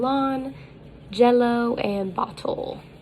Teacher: the lowercase l that is voiced and it's an alveolar liquid